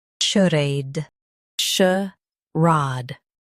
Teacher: Stress ray and keep sh light.